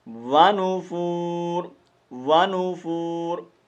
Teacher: یہ را ساکن ہوگی، اور جب را ساکن ہوگی تو اس وقت را کو پر کر کے پڑھیں گے